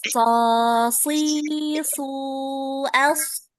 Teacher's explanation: Ya, so, bukan seperti itu, tapi so, so, so, ya yang naik itu pangkal lidahnya, yang bikin dia tebel itu pangkal lidahnya yang naik, bukan mulutnya. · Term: huruf sod